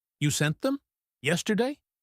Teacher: He stresses you and yesterday. He is emphasizing the person and the time because he is surprised.